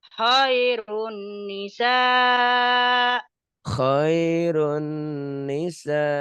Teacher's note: nun mati atau tanwin ketemu nun dan mim. Idgham bigunnah ya. Khairun jadi ditahan.